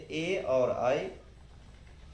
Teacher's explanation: ए और आई कंठ और तालु से बोले जाएंगे